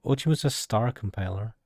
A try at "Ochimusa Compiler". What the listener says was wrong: I think it would just be Ochimusa Compiler. You don't pronounce the star.